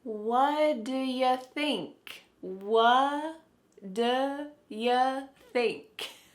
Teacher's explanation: the final T on the question word what is cut off. We just say what.